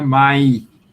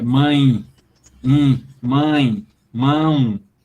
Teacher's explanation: é tudo nasal, não é só uma que está nasalizada. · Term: nasalização na semivogal